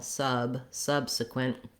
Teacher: i can clearly hear the uh is held for a longer time